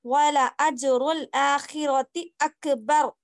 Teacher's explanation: بس اکبر پڑھنے میں را موٹا ہوگا، کیوں؟ تو جب را کے اوپر ساکن آیا تو اس سے پہلے زبر ہے.